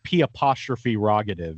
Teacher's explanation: I say it quickly enough that all those R's are just mushing into each other anyway